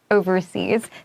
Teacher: 因 为 这 个 overseas 它 其 实 是 副 词 啦， 所 以 那 个 副 词 啊， 你 那 个 s 一 定 要 出 来 哦， 然 后 那 个 s 在 字 尾 念 z